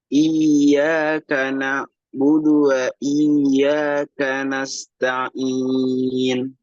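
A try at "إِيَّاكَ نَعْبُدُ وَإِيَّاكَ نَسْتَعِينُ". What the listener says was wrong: Nanti perbaiki lagi di huruf ainnya ya. Iyyaka na'budu wa iyyaka nasta'in.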